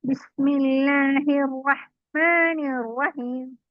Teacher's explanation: നാവ് അണ്ണാക്കിൽ തട്ടിക്കൊണ്ട് മുൻപല്ലിന്റെ തൊട്ട് മുകളിലായിട്ട് തട്ടിക്കൊണ്ട് റഹ്മാനി ബിസ്മില്ലാഹിർ റഹ്മാനിർ റഹീം മാ എന്നുള്ളത് രണ്ട് ഹർഫ് മാത്രം നീട്ടിയാൽ മതി